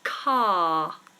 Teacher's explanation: notice how my mouth stays completely open my tongue doesn't move and we don't pronounce the r